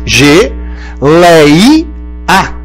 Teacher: Esse lei é aberto, é tônico, só que não é final, é paroxítono.